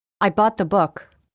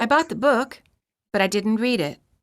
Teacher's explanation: The first sentence has falling intonation, which indicates that the thought has ended. The second sentence contains rising intonation, indicating that the thought has not ended.